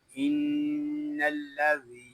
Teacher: یہاں ذال کو ہم ایک الف تک کھینچ کے پڑھیں گے کیونکہ یہاں یا مدہ ہو رہا ہے